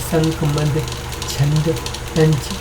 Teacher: मुंह से कम और नाक से अधिक सांस निकलती है